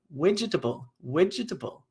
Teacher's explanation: there's an influence here from the v to the w sound. There's also an insertion of a vowel that doesn't exist